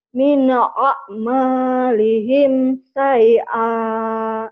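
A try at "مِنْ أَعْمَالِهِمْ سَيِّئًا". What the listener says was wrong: Kurangnya di sini satu di ain mati. Kok ain mati susah tuh? Sama shin. Min a'a. Terus nyelek. Min a'malihim syai'a.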